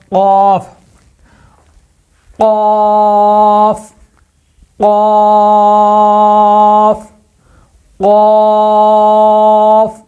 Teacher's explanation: تالو کا یہ یہاں سے لے کے آخر تک سخت حصہ ہے، اور کوے کے ساتھ جو حصہ ہے نا وہ ہے نرم حصہ۔ تو زبان کی جڑ کو اوپر جو ہے نا کوے کے ساتھ جو ہے نا لگانا ہے